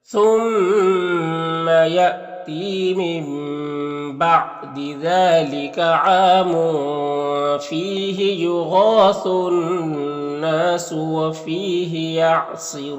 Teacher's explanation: الف لام حروف شمسی نون کے شروع میں ہیں تو الف لام دونوں کو نہیں پڑھیں گے. نون مشدد غنہ ہوگا اور الف مدہ ایک الف کے برابر کھینچیں گے.